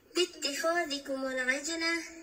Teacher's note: در کلمه عجله میبینیم که جیم ساکن است، اینجا قلقله صورت میگیره